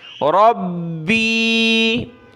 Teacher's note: با کو سخت کرنا ہے اور نیچے یا کی طرف کھینچیں گے تھوڑا سا